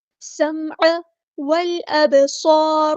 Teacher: حمزہ کی آواز کو واضح ادا کرنا ہے. با ساکن پہ قلقلہ ہوگا، آواز پلٹ کر واپس آتی ہوئی محسوس ہوگی · لام یہاں پر لام قمریہ ہے، اس کو ظاہر کریں گے